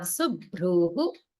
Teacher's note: notice the holding on visarga after a dirgha.